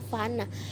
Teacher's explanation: Fonem F dalam bahasa Bugis dapat direalisasikan sebagai bunyi F yang tidak bersuara dan bergesekan seperti pada kata fana yang berarti mati.